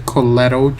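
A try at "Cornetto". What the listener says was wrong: No, it's Cornello. I don't think there are any T's.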